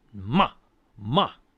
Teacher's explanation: And then the fourth tone is the one that drops in pitch. It's like no.